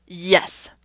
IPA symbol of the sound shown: j